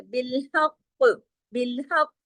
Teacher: ना, तो आपने काफ को इस तरीके से पढ़ना है कि काफ मोटा भी हो, काफ पे कलकला भी हो